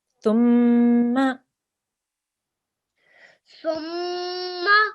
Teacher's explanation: we hold on the meme, make a nasal sound for 2 seconds. But when we say ma, that should only be 1 second because this is a simple fatha here.